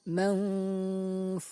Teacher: suara nun sukun tersebut dibaca samar antara izhar dan idgham lalu didengungkan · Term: ikhfa